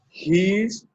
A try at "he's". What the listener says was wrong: The first one here is the long E sound. He's. He's. And the second word is a short sound. His.